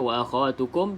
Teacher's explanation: dengung dua harakat tutup rapat bibir atas dan juga bibir bibir bawah